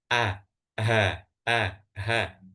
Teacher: kalau ha itu benar-benar yang paling bawah